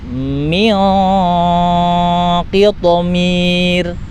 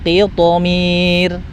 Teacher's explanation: Jadi kalau nun sukun bertemu dengan huruf qaf berbaris kasroh, nun sukun atau tanwin ya bertemu dengan qaf berbaris kasroh, itu tetap dengungnya dengung tebal, tapi ketika karena qafnya berbaris kasroh maka dikurangi ketebalannya. Contohnya min qitmir, gitu ya.